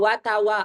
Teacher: Waw itu adalah dengan bidhammis syafatain, dengan memonyongkan dua bibir. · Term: makhraj waw